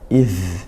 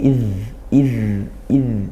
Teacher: Di situ ada dalal sukun ya. Dialirkan suaranya. Tapi tidak desis. Jadi bukan iz itu nanti seperti zai iz gitu ya.